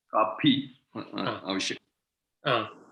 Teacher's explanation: Atra pa nasti, pha asti.